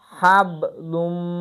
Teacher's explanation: Həd də uzatma var. Amma bildiyiniz kimi bu hə hə deyil. Yəni boğaz həsindən deyilir.